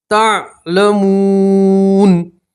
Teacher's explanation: وقف کریں گے تو نون کے اوپر زبر اسے ہٹا دیں گے اور جزم پڑھیں گے